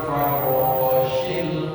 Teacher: Syin makhrajnya di tengah-tengah lidah.